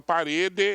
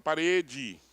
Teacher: esse E final, átono, a nossa tendência é transformá-lo em I. Então eu não falo parede, eu falo parede.